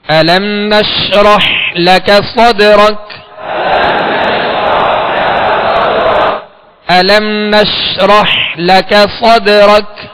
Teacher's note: نش آواز شین کو ادا کرتے ہوئے منہ میں پھیل جائے گی مگر اس میں بھی قلقلہ نہ ہو۔